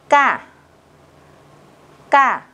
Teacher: cách đọc của phụ âm căng đó là các bạn phải đọc nhấn mạnh, không bật hơi và đọc rõ chữ này ra